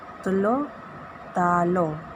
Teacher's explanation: R ditukar kepada O.